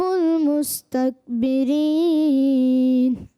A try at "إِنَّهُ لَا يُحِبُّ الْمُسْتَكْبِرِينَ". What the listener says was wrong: ایک جگہ غلطی ہوئی ہے، انہو پہ غنہ کرنا تھا.